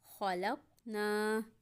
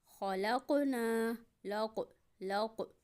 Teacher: قاف کی آواز پلٹ کے آ رہی ہے، اسی کا نام قلقلہ ہے۔ خلقنا۔